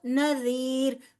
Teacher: را جو ہے وہ باریک پڑا جائے گا کیونکہ را ساکن ما قبل زیر ہے